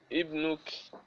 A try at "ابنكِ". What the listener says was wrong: Ibnuki, kaf kasra ki.